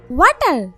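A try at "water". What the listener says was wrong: ওয়াটার না, এটা ওয়াটার। ওয়াটার। জিহ্বার আগে সামনে দুই দাঁতের সাথে লাগবে। ওয়াটার ওয়াটার। তাই তো, ওয়াটার রে ওয়াডা বলতেই আছেন।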